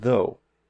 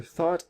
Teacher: One is voiced, so in though, you're vibrating your vocal cords, and in thought, you're not. That's the only difference between these two sounds.